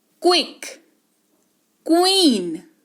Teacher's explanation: क्यू का उच्चारण आधा क और व के तौर पर होता है, क्व